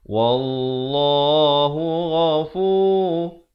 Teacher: lafz jalalah dibaca tebal 2 harakat